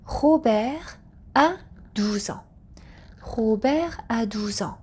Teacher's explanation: So no liaison is happening between Robert and the verb a because Robert is a name. Also, after singular nouns, we do not do the liaison.